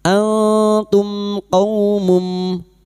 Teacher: Idhar syafawi. Mim sukun dibaca jelas tanpa mendengung.